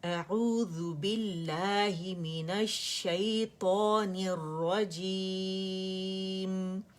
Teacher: اعوذ، حمزہ کہاں سے؟ اقص الحلق سے، عین وسط الحلق سے